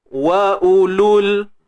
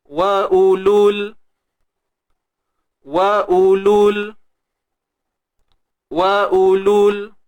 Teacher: Waw mat ni akan digugurkan bunyinya.